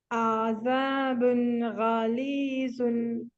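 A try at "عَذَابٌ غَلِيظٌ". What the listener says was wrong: موٹا پڑھیں گے, غین کو موٹا نہیں پڑھ رہے آپ. غلیظ.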